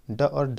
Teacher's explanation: हमारा जीभ ऊपरी छत का अगले भाग को यानी आगे के भाग को स्पर्श करता है, इसे ही मूर्धा कहा जाता है या मूर्धन्य कहा जाता है।